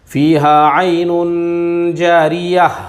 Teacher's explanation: فیہا عین جاریہ، دیکھیے یہاں پہ حالانکہ دو پیش کی تنوین ہے لیکن پھر بھی گول تا ہے اس لیے ہم اس کو ہائے ساکینہ سے بدل کر پڑھیں گے